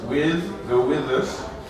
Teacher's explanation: the last consonant sound in with tends to be voiced